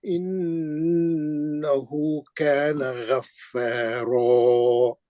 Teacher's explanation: इसमें जो है ये सूरे में पूरे रा का खाफिया है, यानी आयत के खत्म पे पूरे रा आएंगे तो मद्दे असली से रोकना है, रा को मोटा पढ़ना है, एक जबर गिरा के रा को मद्दे असली करके मोटा पढ़ना है।